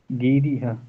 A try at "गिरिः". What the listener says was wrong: देखो गिरिहा नहीं होगा, विसर्ग में जो स्वर लगता है अथवा जो लगाने की विधि है, विसर्ग के पहले जो स्वर है, जैसे ई है तो विसर्ग में भी ई के जैसा ही होगा, गिरी है।